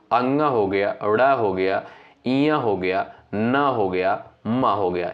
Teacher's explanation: साथियों अनुनासिक वर्ड आप जानते होंगे। इनका उच्चारण करते समय जो है नाक और मुख से जो है वायु निकलती है। ठीक है? कौन-कौन से वर्ड होते हैं?